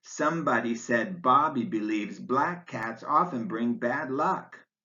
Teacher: you'd put an accent mark over each word in the sentence because all ten of them are stressed